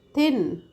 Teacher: So our blade of the tongue covers to upper teeth. Thin. And then comes down.